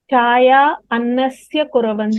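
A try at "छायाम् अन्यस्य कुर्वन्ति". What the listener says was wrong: Chayam anyasya Anyasya. Don't rush. Please don't rush. Chayam anyasya. Can you see a yakara over here in the word? That is not getting pronounced by you. Chayam anyasya kurvanti.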